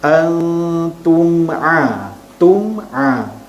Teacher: Dan bacaan dia tidak dengung, dibaca jelas. Mim mati tu kena jelaskan. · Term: izhar syafawi